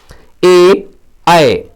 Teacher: ए और आय कंठ तालव्य वर्ण है